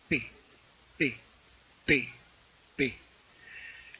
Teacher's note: Cuando tú pronuncias parece que de pronto sale de golpe el aire, como si explotara. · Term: oclusivos